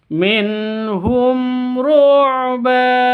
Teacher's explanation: mim mati bertemu dengan RO sama jelas juga karena izhar syafawi